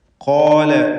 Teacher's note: ഖാഫിനും അലിഫിനും തഫ്ഖീം സ്വരഭാരത്തോടെ ഉച്ചരിക്കുക